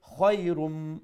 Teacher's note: খার মাখরাজ যে জায়গা থেকে আমরা উচ্চারণ সেটা হচ্ছে গলার উপরের অংশ থেকে এবং তার মধ্যে একটা নম্রতা থাকবে